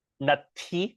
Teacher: we're going to have more of an h sound when we say that word nut almost like you're spitting